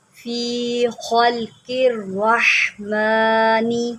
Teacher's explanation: حا کو حلق سے نکالے